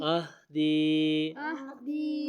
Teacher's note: یا مدہ ہے اس لیے اس کو لمبا کریں گے، چھوٹی مد ہے حمزہ کی وجہ سے آئی ہے